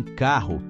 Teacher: O R gutural, como em carro, com som de garganta, veio dos alemães